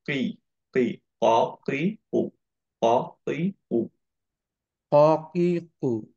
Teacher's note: আমরা ট্রাই করবো পুরা টাংটা অ্যাকচুয়ালি টাচ করে প্রেস করতে এই জায়গাটায় সফট প্যালেটে